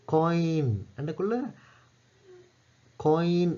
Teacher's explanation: உதாரணம் காயின் என்றக்குள்ள காயின் என்றக்குள்ள ஒய் என்று வருதானே. ஒய் என்றக்குள்ள ஓல தொடங்கி இல முடியுது. ஒரு உயிர் சவுண்ட்ல தொடங்கி இன்னொரு உயிர் சவுண்ட நோக்கி நகருது. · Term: டிப்தாங்